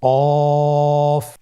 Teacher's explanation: কফের মাখরাজ হলো জিহ্বার গোড়া তার বরাবর উপরে তালুর সঙ্গে লাগিয়ে উচ্চারিত হয়